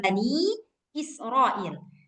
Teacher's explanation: Tapi kalau kita mau baca lanjut, maka panjangnya empat atau lima harakat. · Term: mad jaiz munfasil